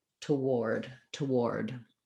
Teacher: it just adds a little schwa for the letter o so it sounds like toward toward · instead of doing toward with no syllable, doing a TW blend, it just adds a little vowel schwa for the letter O